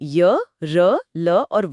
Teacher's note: य, र, ल, व बहुत ही स्मूथ ध्वनियां हैं। हवा कम निकलती है। इसलिए ये अल्पप्राण हैं। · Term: अंतस्थ व्यंजन